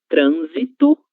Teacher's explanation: Mas, no caso dessas duas palavras, a letra S vai ter som de Z, do português